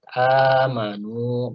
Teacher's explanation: hamzahnya yang kedua dihilangkan, tapi sebagai penggantinya dipanjangkan 2 harokat. Amanu gitu ya. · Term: mat badal